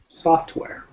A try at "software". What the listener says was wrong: I didn't hear the T. Software. Yeah, don't be lazy like us North Americans. Pronounce your consonants.